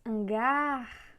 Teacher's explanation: Temos hangar, só que hangar é oxítona, porque vocês perceberam que a força está na última sílaba.